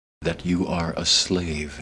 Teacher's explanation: reduced to or and that is not what he did here he said every word clearly and fully with a tiny little break in between